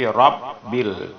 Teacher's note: Tapi robbil, antara bacaan ra dengan bi itu tertahan sedikit. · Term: syiddah